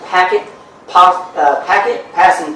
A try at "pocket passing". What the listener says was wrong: Pocket passing. You did say packet passer.